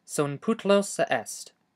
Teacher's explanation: pronounce the middle of it by closing and releasing your glottis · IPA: eʔest